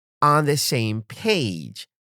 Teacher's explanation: Stress on same and page.